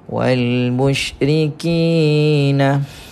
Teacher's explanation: kita jumpa dengan mad asli baca panjang dua harkat